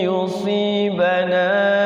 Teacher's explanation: Qul lan yusibana pas minunnya itu mancus ya, jangan menon gitu ya, minun ya, u-nya itu jelas ya. Jadi mencucukan dua bibirnya itu jadi u ya, jangan sampai o.